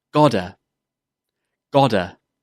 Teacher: the ta in got is often pronounced as a d sound.